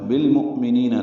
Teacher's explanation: حمزہ ساکن جھٹکے سے ادا ہوگا